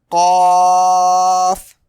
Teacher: It is pronounced from the root of the tongue touching the soft part of the pallet. Pallet means top of the mouth. · It is a thick deep letter pronounced from the tongue root. Okay. Pronounce it like cough.